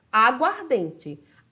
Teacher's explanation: a sílaba tônica foi deslocada porque a água perdeu uma parte dela e aí ficou somente a sílaba tônica de ardente então na